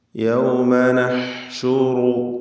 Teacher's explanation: ഹായിൻ്റെ ഉച്ചാരണം പ്രത്യേകം ശ്രദ്ധിക്കുക. തൊണ്ടയുടെ മധ്യമാണ് അതിൻ്റെ മഖ്റജ്.